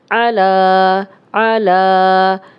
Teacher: اب زبر لمبی نہیں ہو رہی، لیکن لام پہ کھڑا زبر ہے تو یہ لمبا ہو رہا ہے، اور یا پڑھنے میں نہیں آئے گی